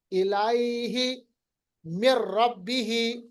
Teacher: نون ساکن کے بعد را آ رہا ہے تو نون کو را کے ساتھ ملائیں گے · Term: ادغام